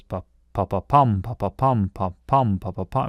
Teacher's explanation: repetition of unstressed syllables and then the odd stressed syllable